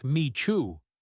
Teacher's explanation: The t and y combine to make a ch sound. This is called coalescence.